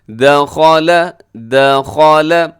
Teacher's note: دخل میں دال باریک، خا موٹا ہے، لام باریک ہے